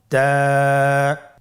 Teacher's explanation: জিহ্বার আগা সামনের উপরের 2 দাঁতের গোড়ার সঙ্গে লাগিয়ে উচ্চারিত হয়।